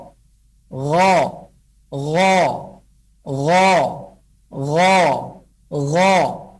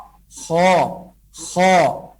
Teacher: Langit-langit daging yang berada di posisi paling belakang. Lidah belakang kita menempel ke langit-langit daging di belakang. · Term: huruf ghain dan huruf kha